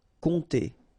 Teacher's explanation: you don't pronounce the P here, and then this OM together will produce the nasal on